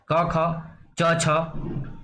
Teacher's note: अघोष मतलब स्वर तंत्रियों में कंपन नहीं हो रहा है। घोष का मतलब होता है जब कंपन जो है होता है, तो इसका मतलब ये है कि जब जिन ध्वनियों के उच्चारण में स्वर तंत्रियों में कंपन नहीं होता है, उसको क्या कहते हैं, अघोष वर्ण कहते हैं। · प्रत्येक वर्ग का पहला और दूसरा, पहला और दूसरा क्या होगा, अघोष होगा